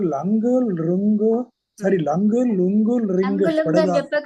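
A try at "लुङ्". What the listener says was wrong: లుంగు లుంగు అని చెప్పకండి. లుంగు లంగ్, లుంగు లంగ్. లుంగు లంగ్.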